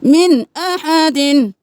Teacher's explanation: यहाँ पे हमज़ा हा, आइन हा, गैन हा में से नून के साकिन के बाद हमज़ा आ गया तो हम यहाँ पे गुन्ना नहीं करेंगे।